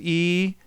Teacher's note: my tongue is high and front in my mouth here so we get a big space behind the hump of my tongue so that first resonance is low